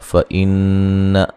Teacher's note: नून मुशद्दद पे गुन्ना ज़रूरी है